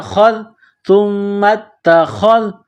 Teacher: خا کو موٹا کرنا ہے، ذال کو باریک